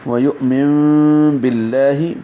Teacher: من نون ساکن کے بعد با آ رہا ہے تو اقلاب ہوگا، من نہیں پڑھیں گے، من پڑھیں گے۔